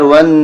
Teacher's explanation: واو کو نون کے ساتھ ملائیں گے اور نون مشدد ہے اس لیے یہاں پر بھی غنہ ہوگا